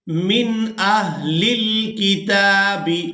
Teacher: اب یہاں نون ساکن پر ہم نے اخفا نہیں کرنا، اس کی وجہ یہ ہے کہ نون ساکن کے فوراً بعد حروف حلقی میں سے حمزہ یہاں پر ہے